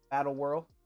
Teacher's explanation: That RLD comes out as two syllables some kind of way